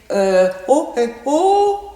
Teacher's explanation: Mon voile du palais, quand je fais oh, oh, il remonte. Toutes les parties mobiles remontent.